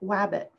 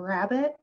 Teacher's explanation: are they putting in like a w for r sound